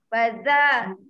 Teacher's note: zal dia kena hujung lidah ni mesti kena gigi baru dia jadi